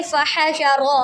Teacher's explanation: تو جیسے دیکھیں فحشر، را کے اوپر جب بھی زبر آتی ہے تو ہم را کو پر پڑھتے ہیں، ہا کو حلق کے درمیانی حصے سے ادا کریں گے